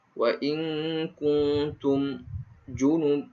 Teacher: nun mati bertemu dengan kaf, maka hukumnya ikhfa, harus dibaca dengan dengung.